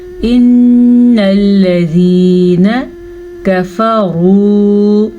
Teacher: را کو پر پڑھنا ہے کیونکہ را کے اوپر پیش ہے